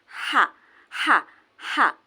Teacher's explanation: bisa ditebak bahwa itu sifatnya hamas karena ada udara yang mengalir